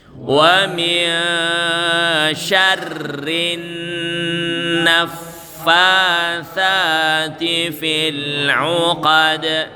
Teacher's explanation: Masuk ke nun tasydidnya selama 1,5 alif